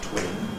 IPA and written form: twɪn (twin)